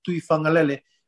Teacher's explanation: that G is pronounced as like NG